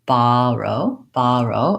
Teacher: so when I typically say this word I say baro baro I use an open relaxed aw my tongues flat on the bottom of my mouth and I don't have any lip rounding